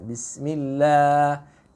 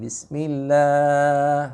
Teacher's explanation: kalimat basmalah itu lahnya yang kita baca dengan tarqiq, ya, atau muraqqaqah, itu dibacanya hanya 2 harokat. Jangan lebih, ya.